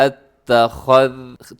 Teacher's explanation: آگے دیکھیے گا اتخذتم، مشکل لفظ ہے تھوڑا سا، خا ہے، اس کے بعد ذال ہے، ذال میں سیٹی نہیں ہوتی، نرمی کے ساتھ اتخذ، تھوڑی سی زبان باہر آئے گی تو سیٹی ختم ہو جائے گی